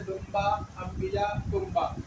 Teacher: जब नून साकिन हो और उसके बाद बा आए तब इसको हम नून को मीम से बदल कर पढ़ते हैं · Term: नून मखलूक